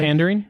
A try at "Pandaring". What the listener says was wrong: No, it's Pandaring. It has an A.